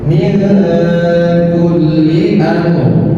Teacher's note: Cara membacanya pertama dengan menyamarkan nun, kedua dengan menahan minimal 2 katuran. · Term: ikhfa